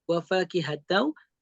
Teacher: ketika mengidgomkan, apalagi ini idgom bigunah, wa fakihatau, bukan hanya diidgomkan saja. Pastikan ada gunnah, ada suara yang mengalir lewat rongga hidung.